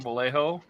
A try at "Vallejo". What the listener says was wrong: Like you're saying the J correctly, but not the L's.